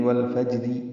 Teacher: ملانے کی صورت میں را کے نیچے زیر ہے، وہ باریک پڑھیں گے، یعنی والفجری، را زیر ری پڑھیں گے۔